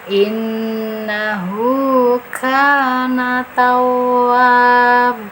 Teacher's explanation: Karena nun bertasdid, jadi ditekan dulu karena tasdid dan didengungkan itu dengan cara ditahan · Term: nun gunah